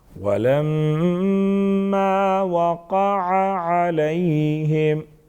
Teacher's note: ولما میم مشدد ہیں غنہ کریں گے